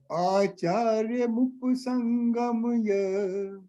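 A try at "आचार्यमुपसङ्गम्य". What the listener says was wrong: Pa is full. Upasangamya. So, Acharyamupasanghamya. No, you are saying up. Up is not the word. Up means pa should be halanta.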